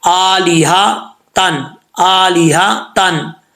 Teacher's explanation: यहां पे हा दो आंखों वाला है भारी साउंड के साथ पढ़ा जाएगा